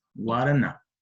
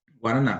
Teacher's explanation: sílabica Então ela tem três sílabas nós percebemos que a ênfase a sílaba que é mais pronunciada que tem a maior intensidade é a última sílaba que é o na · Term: sílaba tônica